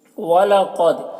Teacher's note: یہاں پر قاف میں قلقلہ ہوگا، قاف کو پر پڑھیں گے کیونکہ یہ حروف مستعلیہ میں سے ہے، اور دال میں قلقلہ ہوگا۔